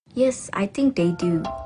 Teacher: she uses a full rising tone appropriately to indicate that she doesn't really know or is unsure